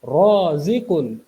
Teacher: इसकी इब्तदाई आवाज़ मोटी है क्योंकि रॉ के ऊपर ज़बर आ रहा है